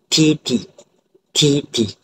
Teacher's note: hujung lidah akan menyentuh gusi, akan menahan seketika dan kemudian akan melepaskan udara tersebut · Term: bunyi alveola